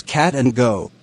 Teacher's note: Ke and je are velar. The back of the tongue is pressed against an intermediate area between the hard and the soft palate.